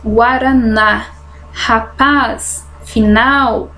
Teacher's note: aquelas que tem a última sílaba Ford exemplos guaraná rapaz final então a lei a última sílaba é forte Ela é uma oxítona